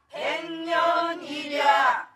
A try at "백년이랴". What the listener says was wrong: 확 떨어뜨리지 말고 백년이랴